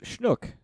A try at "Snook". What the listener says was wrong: Snook, not Schnook.